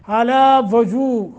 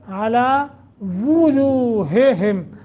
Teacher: واو کے اوپر ضمہ کی بجائے فتح پڑھا جاتا ہے